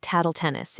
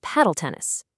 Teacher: A classic example is someone accidentally saying taddle tennis instead of paddle tennis. The T sound from tennis literally jumped the queue on the factory floor and replaced the P in paddle. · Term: anticipation error